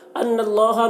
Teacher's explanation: نون مشدد نون میں غنہ کریں گے